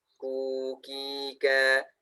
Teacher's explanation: huruf yang hidup ka dibaca ka aja, dia hamasnya itu hanya terdengar sedikit aja sebetulnya